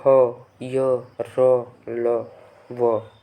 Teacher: जिनको बोलने में दोस्तों स्वर तंत्रियाँ क्या करती हैं, कंपन करती हैं, उनको बोलते हैं सघोष